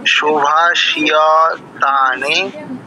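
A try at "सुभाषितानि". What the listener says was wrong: না না না, অক্ষরগুলো ভালো করে চিনতে পারছেন না। সুভাষিতানি, ওটা মধ্যাংশ রস্বীকার। সুভাষিতানি বাচয়তি, বাচয়তি,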